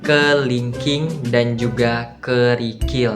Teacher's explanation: Nah, contoh dari vokal I pada tinggi bagian bawah dan condong ke depan